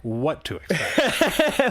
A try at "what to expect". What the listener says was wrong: What to expect? You put the wrong emphasis on the wrong syllable.